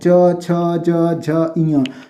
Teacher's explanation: च का उच्चारण स्थान कहाँ से होता है, तालु से। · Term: तालव्य